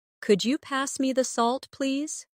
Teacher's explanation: Listen to the way my voice rises on could you and falls gently at the end